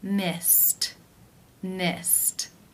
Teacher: the D sound carried carried how do you pronounce this verb the final infinitive sound is the S sound that is unvoiced so it is case one where the ed is pronounced as the T sound